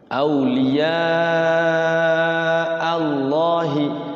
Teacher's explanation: lafaz Allah dibaca tafkhim, tebal, jangan dibaca Allahi. Kalau Allahi tipis, kayak orang tidak bisa menyebut lafaz Allah, jadi Allah, jadi nantinya tipis, kurang tepat.